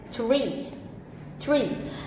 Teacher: when your tongue is high you will produce a vowel sound e as in the word tree